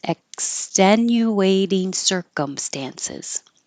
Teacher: You don't have to say any K, but your tongue goes to the K position.